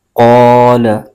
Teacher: اور قاف حروف مستعلیہ کا حرف ہے، اس کو پر یعنی موٹا کر کے بھی پڑھیں گے۔ لام پر زبر ہے، اس کو بغیر کھینچے پڑھیں گے۔